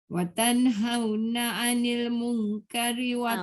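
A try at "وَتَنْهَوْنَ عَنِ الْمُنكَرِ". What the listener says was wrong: Mung tu jangan pendek. Mung dia dengung. Kari tak boleh panjang. Wa tanhauna 'anil munkari wa tu'minuna billah.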